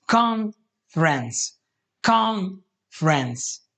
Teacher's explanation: And the reason for this separation is because in English, words are stressed. So you stress some syllables, con, instead of other syllables